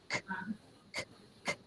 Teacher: We can't feel the voice box with K. We almost do, almost.